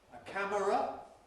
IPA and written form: ə ˈkæmərə (a camera)